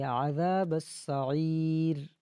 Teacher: عین کو گلے کے درمیان سے ادا کرنا ہے